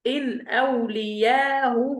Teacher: يبقى إذا سهلنا الهمزة الأولى وقرأنا بروم الضمة، يعني أتينا بجزء من الضمة في الهاء